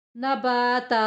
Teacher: وہ نباتن نباتا، نبا با میں الف مدہ ہو رہی ہے، وقف کی صورت میں اسے نباتا ادا کریں گے، یعنی تنوین کا ایک زبر نہیں پڑھیں گے